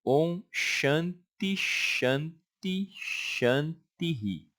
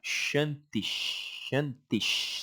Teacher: ele repete o som do S, fica shantish, shantish. Você já emenda no S da frente.